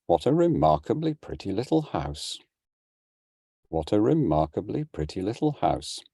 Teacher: Scandant just means climbing, a climbing head, and it's broken, or what I would prefer to call reduplicated. So it's 3 successive repeated rising patterns, each note beginning on an accented syllable.